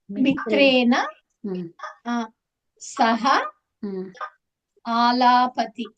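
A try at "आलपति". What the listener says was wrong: లాగా దీర్ఘం లేదు, ఆలపతి.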